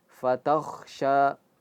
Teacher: Tanya tipis, kho-nya tebal, sya-nya tipis lagi.